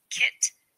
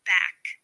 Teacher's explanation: 2 stop sounds are velar sounds, which are made with the tongue raised against the soft palate in the back of the throat. The k is a voiceless stop consonant.